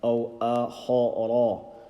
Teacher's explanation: So أو is empty mouth, then خارا full mouth, and then don't overstretch it.